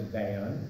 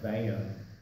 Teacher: she pronounced my first name not as Van, which is quick one syllable, but it's kind of a long drawn out Van